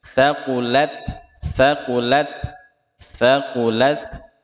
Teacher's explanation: Jadi man thaqulat, lat taknya hamas ya. Thaqulat, nafas yang di ujung lidah itulah yang dihembuskan. Thaqulat, thaqulat, thaqulat, tidak boleh berlebihan.